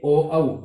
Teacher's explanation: कंठ और ओष्ठ दोनों से उच्चारित होते हैं, इसलिए ओ औ दो स्वर हैं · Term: कंठोष्ठ्य